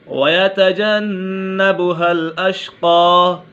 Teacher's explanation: نون مشدد ہے، اسے نون مشدد میں ہمیشہ غنہ ہوتا ہے۔